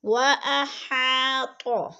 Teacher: ربهم، رو پر پڑھا جائے گا۔ وَأَحَاطَ، حا باریک ہے اور الف مدہ ہے، تھوڑا سا کھینچ کر پڑھیں گے